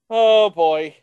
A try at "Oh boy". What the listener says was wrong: I think you need to emphasize that a little more. Oh boy.